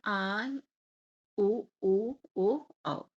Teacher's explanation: जीभ का अग्र भाग काम करता है अग्र स्वर में और जीभ का मध्य भाग काम करता है मध्य स्वर में और जीभ का पिछला भाग काम करता है पश्च स्वर में